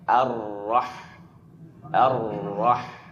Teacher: rnya dalam keadaan mufakhamah dalam keadaan tebal · jangan sampai a-nya itu tergelincir seakan-akan seperti pengucapan huruf O, tapi a a tetap fathah dengan itmamul harakat fathahnya